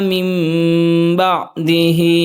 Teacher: نون ساکن کے بعد با ہے تو اقلاب کریں گے، نون کو میم میں بدل کر پڑھیں گے